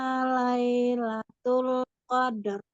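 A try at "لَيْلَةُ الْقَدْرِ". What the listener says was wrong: Jangan lai, Bu.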